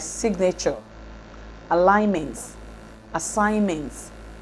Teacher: /G/ is retained as morpheme boundary in words like signature, alignments, assignments